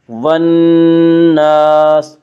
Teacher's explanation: الف اور لام کو نہ پڑھا جائے گا بلکہ بعد والے حرف سے ملا کر پڑھیں گے۔ نون یا حروف شمسی میں سے ہے، نون سے پہلے الف اور لام ہے، اس لیے الف اور لام کو نہ پڑھا جائے گا بلکہ بعد والے حرف سے ملا کر پڑھیں گے۔